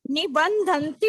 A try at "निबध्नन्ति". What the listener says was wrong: नहीं नहीं नहीं नहीं, निबंधन्ति नहीं है, निबध्नन्ति। नो सुनो, निबध्नन्ति, निबध्नन्ति। हाँ देखो, ये मेरे में तो क्लियरली लिखा हुआ है, नी ब और आधा ध, निबद्ध।